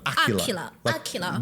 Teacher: the stress syllable will be the first one